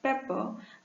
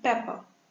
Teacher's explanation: If the pa sound is in the initial position, it is aspirated.